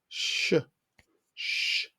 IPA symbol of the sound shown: ʃ